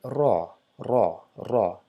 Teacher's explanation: pronounced by vibrating the tip of the tongue against the upper gum. I would say rather say palate instead of gums.